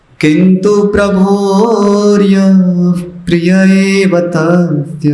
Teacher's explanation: यह विसर्ग है उसके आगे प आ रहा है तो छोटा सा एक संधि विकल्प है कि उसको आप हल्का सा फ बोल सकते